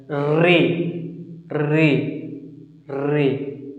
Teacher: री जीभ के आगे वाले भाग को मोड़ दिया जा रहा है, ऐसा लग रहा है। री री री, तो जीभ के आगे वाले भाग से बोल रहे हैं, तो ये अग्रस्वर में आएगा।